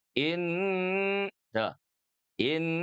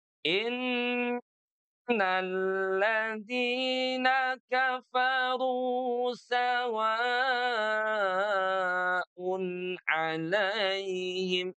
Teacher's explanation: Jadi gunnahnya tetap konsisten di 2 harokat ya.